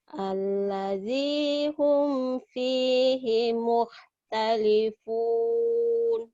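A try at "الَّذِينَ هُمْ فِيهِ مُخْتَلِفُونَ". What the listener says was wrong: alladzi hum fihi Kho-nya kurang keluar kamu. Alladzi hum fihi mukhtalifun. Hum Alladzi hum. Mukh, mukh, mukh.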